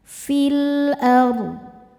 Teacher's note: Huruf ro sukun dibaca secara tafkhim karena didahului baris fathah. Cara bacanya dbaca tebal.